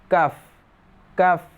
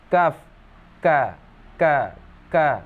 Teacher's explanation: sifat dia yang pertama itu nafas terhembus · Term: hamas